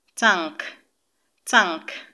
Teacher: the ang sound is pronounced through the nose and it occurs in words that have and g together and